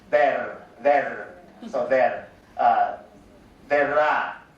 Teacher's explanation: for the R, we are like using trill. So we are like pronounce it not flat or tap.